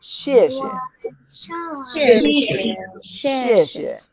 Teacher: second character could be lower, weaker.